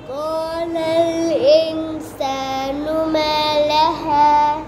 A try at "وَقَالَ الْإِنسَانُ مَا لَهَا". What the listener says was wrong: ये गुन्ना आपने फिर छोड़ दिया है.